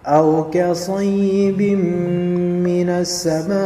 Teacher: Lihat mim fathah kemudian ada alif dan dia menjadi panjang. Ini 4 atau 5 harokat yang biasa disebut sebagai mad wajib muttasil.